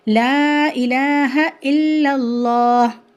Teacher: کلمہ طیبہ میں اللہ کا لام موٹا پڑھا جائے گا